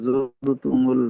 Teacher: را ساکن ما قبل کیا ہے زیر ہے تو اس کو باریک ہی پڑھیں گے